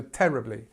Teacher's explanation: the stress is on the first part of the word